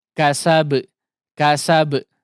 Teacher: Tentu saja di sini huruf qalqalah seperti yang sudah kita singgung sebelumnya dan kita wanti-wanti bahwa huruf qalqalah di sini adalah huruf ba yang memang langsung dipantulkan ya.